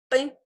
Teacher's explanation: Si queremos pronunciar una P, o sea, como cerramos los labios completamente, P, incluso no hay movimiento, no hay vibración en las cuerdas vocales